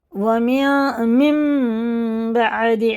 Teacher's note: نون نہیں پڑھا جائے گا، نون کی جگہ میم کو لگا کے پڑھیں گے، اور اس کے بعد با بھی ہوتا ہے. یہاں غنہ اور اخفا دونوں ہوئیں گے، جیسے یہ اخفا اور غنہ دونوں ہوتے ہیں نا، یہاں بھی ہوگا. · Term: اقلاب کا قاعدہ